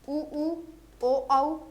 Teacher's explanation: वृत्तमुखी होठ जो है गोल बन जाएंगे, ठीक है, वृत्त की भांति नजर आएंगे।